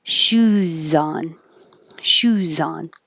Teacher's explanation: make an s first because that's the right position and then turn on sound make voicing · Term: z sound